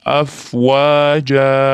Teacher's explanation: oxiridagi ma aliflar mad hisoblanadi. Oxirni ozgina cho'zib to'xtaymiz